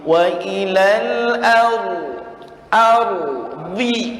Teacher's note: dalam kalimat al-ardi di situ ro sukunnya ditebalkan tafhim